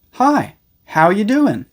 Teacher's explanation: in more informal situations, many people completely remove the word are.